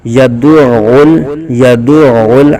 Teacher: آگے یدعل، دال کو عین کے ساتھ ملا کے پڑھیں گے، دال عین پیش دع دع، اور عین کو لام کے ساتھ، عین لام پیش عل، یدعل یدعل، عین کو حلق کے درمیان سے ادا کریں گے